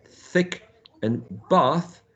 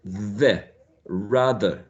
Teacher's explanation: Both of them fricative. The first one is voiceless, as thick and bath, and the second one here is voiced, the, rather, right?